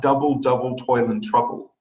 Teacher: it is the first syllable that gets stressed, the second one unstressed.